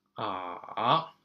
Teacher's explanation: you have to go down first. Okay, so you have to go to the lowest already, and then you go up to 4. Okay, not as high up there as tone number 1, but it's still pretty high. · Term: third tone